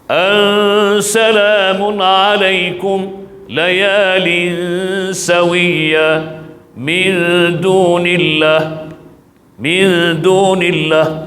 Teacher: kalau nun mati ataupun tanwin bertemu dengan huruf ikhfa yang bersifat istifal, artinya bila kita tatbik amali, gunnahnya hanya gunnah keluar tu bunyi gunnah yang nipis.